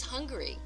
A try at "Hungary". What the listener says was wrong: It's Hungary, not hungry like you were hungry food. Hungary.